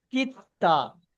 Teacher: কাপের পরে সাকিনও এসছে, তারপরে তাসদিদ এসছে, সেই জন্য সাকিন অক্ষরটা বাদ চলে যাবে মাঝখান থেকে, কাপটা ডাইরেক্ট তাসদিদ অক্ষরের সঙ্গে মিলিয়ে পড়তে হবে